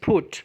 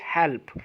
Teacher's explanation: अगर हम इसको फर्स्ट देखें तो अगर पा साउंड जो है वो किसी भी वर्ड के शुरू में लग जाए, जैसे हमारे पास PUT दैट्स पुट, और जब हम इसको पा को एंड पे लगाएं तो दैट इज़ हेल्प। पहले वाला जो है वो एस्पिरेटेड है, फा साउंड पे आता है। दूसरे वाला जो है वो नॉन एस्पिरेटेड है, वो सिंपल पा बोला जाता है।